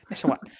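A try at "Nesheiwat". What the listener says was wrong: I think the T is silent. You got to get that wah in there.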